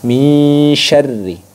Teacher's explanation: Nun sukun lebih jelas dibandingkan dengan ikhfa ausad. Ikhfa ausad itu lebih cenderung mulai samar ke shinnya